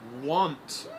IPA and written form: wɒnt (want)